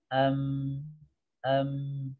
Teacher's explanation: mim itu memiliki sifat yaitu ini gunah yaitu dengung ya jadi saat mengucapkan mim itu ee ada dengung yang masuk ke rongga hidung kita